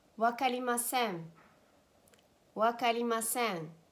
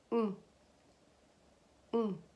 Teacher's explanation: in Japanese, you don't pronounce an N. It's a nasal pronunciation that you pronounce from the back of your nose.